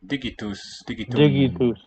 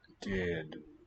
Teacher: And we note that the g dropped out. And the t toward the end has voiced.